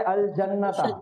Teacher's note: یہ لام کو سکون کے ساتھ پڑھا جائے گا، الف ڈراپ ہو جائے گی